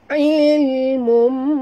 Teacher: tanwin bertemu dengan mim idgham ma'al-gunah dengung